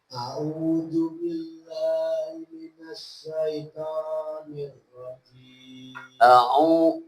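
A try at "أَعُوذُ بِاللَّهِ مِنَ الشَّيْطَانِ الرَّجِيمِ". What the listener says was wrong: Ain dan alif beda. A'udzu minasy syaitan.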